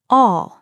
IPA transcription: ɒ